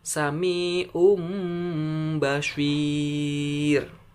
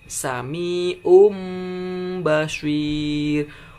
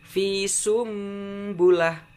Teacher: Jadi apabila ada nun mati atau tanwin bertemu dengan huruf ba, satu doang hurufnya ya, huruf ba doang ya, maka nun mati itu akan bunyinya seperti huruf mim